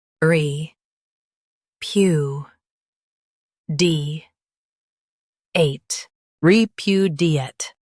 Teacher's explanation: Stress pu and keep d light.